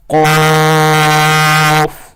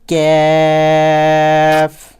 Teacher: پہلا قاف جو ڈاٹ والا قاف ہوتا ہے اسے ہم نے موٹا کر کے پڑھنا ہوتا ہے، اور دوسرے کو باریک